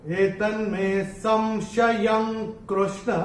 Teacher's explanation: और य के ऊपर जो ये अनुस्वार आ रहा है उसके बाद का अक्षर है क, और अनुस्वार के बाद जब क आएगा तो अनुस्वार का उच्चारण होगा अंग।